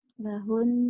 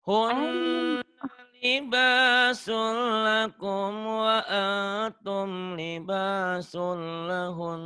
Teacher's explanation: Lahun ini gunnah, ditahan. Ujungnya lahun gitu ya.